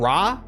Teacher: they're saying ra, but it's the softest, and it almost sounds like they're saying L. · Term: the softest R